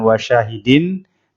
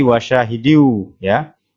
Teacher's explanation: ada tanwin bertemu dengan huruf wow bacaan idgham bighunnah artinya masuk dengan dengung jadi dimasukkan ke wow nya bukan war sahidin tapi wajah hiu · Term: idgham bi gunnah